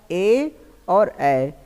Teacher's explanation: ए और ए, इसका आपका कंठ से होता है। कंठ लेकिन किससे होता है, तालव्य, कंठ तालव्य से।